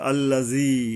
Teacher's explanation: জাল উপরের দাঁতের আঘাত থেকে জিহ্বা গিয়ে মিশবে হালকাভাবে বা পাতলাভাবে